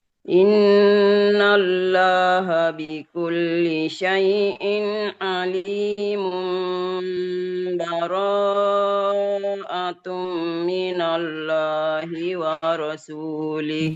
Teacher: disambung dengan mempraktekkan hukum iqlab karena terjadi pertemuan tanwin dengan baknya baro'atun